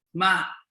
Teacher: the second zone is the rising tone note that the tone rises